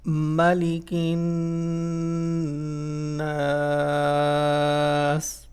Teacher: when you have shad on noon, so you need to use this noon with a little nasal sound. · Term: gunna sound